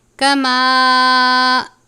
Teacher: الف کے اوپر چھوٹی مد ہے، اس کی مقدار 3 الف کے برابر ہے، یعنی اس کو 3 الف کے جتنا لمبا کر کے پڑھتے ہیں